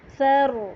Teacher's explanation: را جو ہے وہ ساکن حالت میں بھی موٹا پڑھا جائے گا، کیوں؟ جب ہم اس کو ساکن کریں گے نا تو اسے ہم موٹا ساؤنڈ کریں گے، سر، ایسے سر، سر کر کے نہیں پڑھیں گے، سر تھوڑا سا موٹا۔